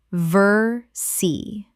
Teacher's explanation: Two syllables only in English and the les are completely silent.